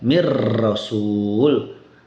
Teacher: nun sukunnya hilang tidak ada zatnya tidak ada kemudian gunahnya juga tidak ada. Semua masuk ke huruf ro dibaca mir rasul. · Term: idgham sempurna